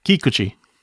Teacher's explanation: the emphasis on the syllable on the first syllable